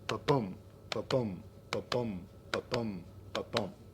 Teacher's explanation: Iambic pentameter is a line of 10 syllables. 5 of those syllables are stressed, 5 are unstressed, right? And it starts on an unstressed syllable, like a human heartbeat.